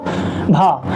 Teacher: कंपन भी हो रहा है और अधिक मात्रा में हवा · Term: संघोष महाप्राण